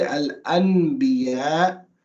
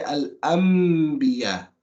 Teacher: when it's followed by a ba, you don't read it as a noon, you read it as a meme. So you don't say al-anbiya, you say al-anbiya.